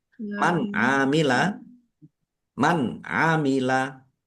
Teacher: Nun sukun bertemu dengan huruf ain. Bacaan izhar dibaca jelas. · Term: idhar